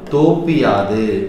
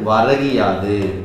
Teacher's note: நிலைமொழி ஈற்றில் குற்றியல் உகரம் வந்து வருமொழி முதல்ல யகரம் வந்தால் நிலைமொழி ஈற்று உகரம் இகரமாக தெரியும். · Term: குற்றியல் இகரம்